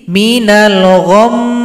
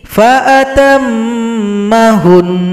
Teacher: setelah sukun didengungkan dua harakat